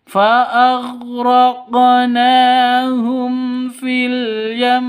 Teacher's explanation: Izhar syafawi jelas tidak boleh disentak. tidak boleh didengungkan.